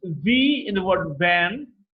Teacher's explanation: When the air passes through, there's a lot of vibration involved. It's labiodental because the lower lip and the upper teeth are involved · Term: voiced labiodental fricative